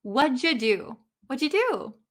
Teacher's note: this you becomes uh and connected with the did